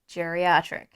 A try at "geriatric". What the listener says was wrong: It's pronounced geriatric. It's a hard G, babe.